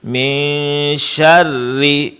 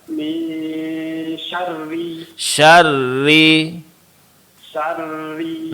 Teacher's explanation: dalam pengucapan huruf ra yang berbaris bawah dan dia berbaris tasydid, ini jangan lupa tipis ya Pak ya, langsung ditipiskan seperti min syarri.